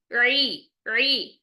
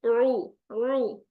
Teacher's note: आपने पीछे की तरफ जुबान को प्रेस किया तो हमारी रगड़ खाती हुई साउंड निकलेगी। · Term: आइन